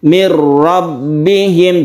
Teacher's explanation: seakan-akan tidak ada ya mirbihim dalam penulisan itu Nun ada tapi dalam bacaan nun ini telah masuk ke huruf ro dan bila gunna tidak berdengung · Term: Idgham bila ghunah, idgham bila gunnah